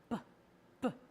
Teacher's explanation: So how you make that sound is you take your lips and you close them, and then you burst the sound open very quickly. B, B. You're going to try not to put an sound after that, just B, B.